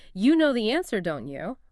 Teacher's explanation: with a falling intonation at the end, I'm conveying certainty. It's an observation I'm just expecting you to confirm.